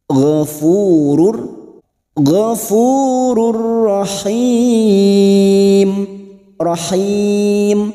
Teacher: nun sukun atau tanwin yang bertemu dengan huruf lam dan ro namanya bacaan idgam Bila ghunah masuk tanpa mendengung